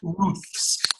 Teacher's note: See how but this Ruths, that's why I was kind of hesitant because but it's important that Ruths shows the difference between the TH and the S, because what you're doing is you're still pronouncing the TH, but you're pulling your tongue back, and that makes it an S